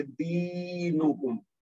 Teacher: دال کے بعد جو یا ساکن ہے وہ اس سے پہلے زیر کی وجہ سے یا مد بن جائے گی, اور یہ 2 حرکت تک کھینچ کے پڑھیں گے